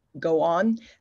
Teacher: There's an insertion of a W and the changing of the vowel sound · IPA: /gəʊ wɒn/